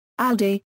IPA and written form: aldiː (Aldi)